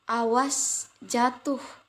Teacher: ucapan panjang pada silaba terakhir bermaksud mencari perhatian atau penyangatan. Misalnya dalam kalimat berikut, awas jatuh, diucapkan awas jatuh.